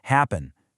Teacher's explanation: In the word away, the stress is on way, so the mark goes before it, away. For the word happen, the stress is on the first part, hap, so we write happen.